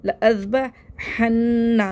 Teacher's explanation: नून मुशद्दद को गुन्ने के साथ पढ़ना है